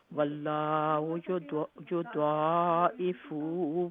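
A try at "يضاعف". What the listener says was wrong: یہ نہیں فا لمبا نہیں. واللہ یضاعف لمن یشاء.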